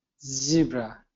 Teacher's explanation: Z is right there in front of your teeth.